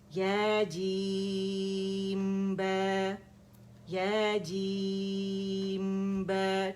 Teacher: ٹھیک ہے. دیکھیں با، با میم کی آواز ایک کاؤنٹ کے لیے چلی، پھر با ادا کیا